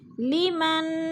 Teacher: نون ساکن کے بعد کاف آ گیا ہے تو اخفا ہو رہا ہے، آواز کو ناک میں چھپا کر پڑھیں گے